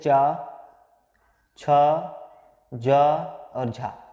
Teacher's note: हमारे जो चा वर्ग के वर्ण हैं, जैसे च, छ, ज और झा, ये चा वर्ग के वर्ण हैं, इनमें भी संघर्ष होता है।